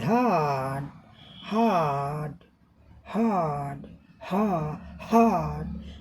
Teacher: हा फफाफे, और कुछ सामने रखेंगे, हथेली रखेंगे, कागज रखेंगे तो हवा का झोंका का अनुभव होगा। The air comes through a small gap at the back of the mouth, मुख के काफ़ी इधर पीछे से हवा आती है। देयर इज नो आइसिंग, और इसमें कोई वाइब्रेशन, कोई कंपन गले में नहीं होता है।